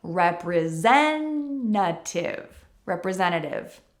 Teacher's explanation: In the word representative, we have that spelling. And so many fast-talking North American English speakers will cut that T out. And it sounds like representative.